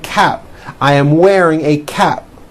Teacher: you don't hear the P sound